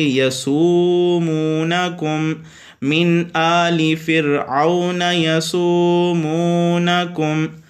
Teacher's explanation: الف مدہ آپ کو پتہ ہے الف سے پہلے زبر آ جائے، واو مدہ واو ساکن سے پہلے پیش آ جائے، یا مدہ یا ساکن سے پہلے زیر آ جائے۔ یہاں پہ یہ دونوں واو مدہ ہیں، ایک الف کے برابر، ان کو لمبا کر کے پڑھیں گے